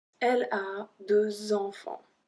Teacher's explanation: we still make the liaison like it was a S.